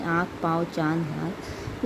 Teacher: अनुनासिक, अनुनासिक स्तर के लिए चंद्रबिंदु का प्रयोग होता है। इसका उच्चारण करते समय हवा मुंह से और नाक दोनों से निकलती है।